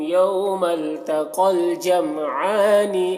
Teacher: یوم یہاں پر واو لین ہے، اسے نرم آواز کے ساتھ جلد پڑھنا ہے، معروف پڑھنا ہے۔ یوم التقل قاف کو پر پڑھیں گے، اور یہاں پر یا کو نہیں پڑھا جائے گا، قاف کو لام کے ساتھ ملا کر